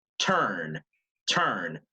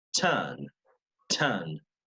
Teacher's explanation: We also drop the letter R at the end of words in British English and after a vowel.